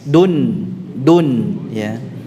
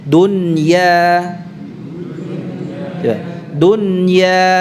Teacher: Artinya membaca dengan jelas ini dipisah antara pengucapan nunnya dengan huruf setelahnya. Jadi tidak diidghamkan. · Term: idhar